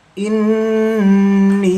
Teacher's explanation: Nun bertasydid termasuk hukum bacaan ghunah. Didengungkan membacanya dua harakat.